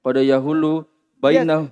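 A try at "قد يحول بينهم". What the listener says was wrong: tidak tasdid lamnya.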